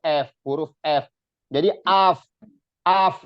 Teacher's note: ketemunya perut bibir bawah dengan gigi seri atas dibacanya F kalau kita tuh F huruf F jadi AF AF jangan S